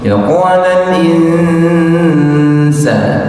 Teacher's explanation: Tetap tahan, ada ikhfa di situ, nun ketemu sama sin. Ya qalal insan, nun ketemu sin.